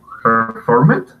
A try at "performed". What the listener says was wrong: Okay, now the pronunciation there, you do not want to emphasize pronouncing the ed at the end. You want to make that into a T sound a little bit. performed.